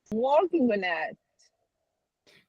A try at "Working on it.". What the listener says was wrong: Just a little stronger on the on. Working on it.